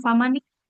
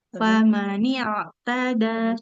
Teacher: huruf ain sukun jangan seperti kaf